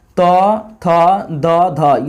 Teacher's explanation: त थ द ध ये ये सब दंत में आ जाता है